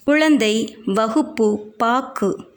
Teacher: உச்சரிப்பதில் வேறுபாடு இருப்பதை காணலாம் அவ்வெழுத்து சொல்லின் முதலிலும் இடையிலும் வரும்பொழுது முழுமையாக ஒலிக்கிறது சொல்லின் இறுதியில் வரும்போது ஒரு மாத்திரைக்கு பதிலாக அரை மாத்திரை அளவே ஒலிக்கிறது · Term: குற்றியல் உகரம்